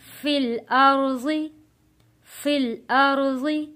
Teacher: یہاں پہ ہونٹوں کو گول کر کے نہیں پڑھنا، تو پھر پیش لگنے کا یہاں پہ خدشہ ہوتا ہے